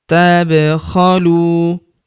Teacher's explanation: Fayuhfikum, tab, huruf ba berharokat sukun kita pantulkan atau kita qalqalahkan. Tabkhalu, huruf lu kita panjangkan 2 harokat karena terdapat waw sukun di depannya. Alifnya tidak dibaca atau dianggap tidak ada.